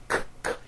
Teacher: Q sounds are made with the K sound, k, k, and the W sound, w, put together.